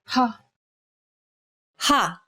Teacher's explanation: the sound of the letter H in the English word hat. Saying this sound involves a forceful expulsion of air.